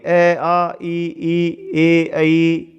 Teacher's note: इन स्वरों के उच्चारण में होठ गोल नहीं होते, इनमें वो होठ गोल नहीं होंगे। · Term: अवर्ताकार स्वर